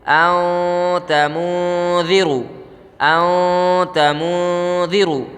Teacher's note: زبان جو ہے نون کو جب پڑھیں گے تو تالو پہ نہیں لگے گی، اگر تالو پہ لگ رہی ہے تو اخفاء نہیں ہو رہا ہے، ٹھیک ہے۔